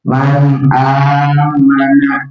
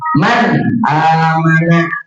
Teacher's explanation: Nun sukunnya nih nunnya dibaca jelas. Jadi jangan didengung, jangan man, jangan ditahan tapi jelas ya. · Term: izhar